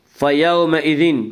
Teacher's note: واولین وہ واو جو ساکن ہو، اس سے پہلے زبر ہو، واولین کو نرم آواز کے ساتھ جلدی پڑھیں گے